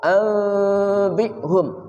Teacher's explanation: Qalab membalik atau menukar. Suara nun menjadi mim. Awalnya an, balik menjadi am. Ya. Yang paling bagus bacanya, ya, suara mimnya itu dibaca samar. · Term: iqlab